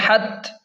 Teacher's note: الہاکم التکاثر، ہا تا زبر حت، سختی سے ہا کو تا کے ساتھ ملائیں کیونکہ تا پر شد ہے۔ حت، تا کھڑا زبر تا اور تا کو ایک الف کے برابر کھینچیں کیونکہ تا پر کھڑا زبر ہے۔